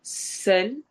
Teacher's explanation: سین سیٹی والی آواز ہے.